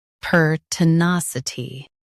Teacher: Emphasize nas and keep ti light.